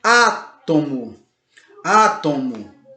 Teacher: percebe como a antepenúltima sílaba mais forte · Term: proparoxítona